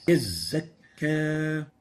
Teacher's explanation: The first one is weak whistling of the zay. يزكى So we shorten the zay and there's no whistling.